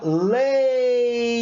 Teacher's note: O E eu pronuncio muito mais forte, ó. Leite. Lá no finalzinho da minha pronúncia eu jogo o I, ó. Leite.